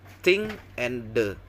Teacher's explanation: sounds are produced by placing the tongue between the front of teeth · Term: Interdental